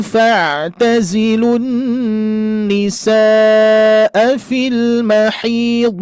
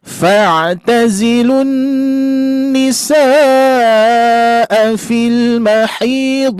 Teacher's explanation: Afwan Ustadz, nisanya sepertinya kurang panjang Ustadz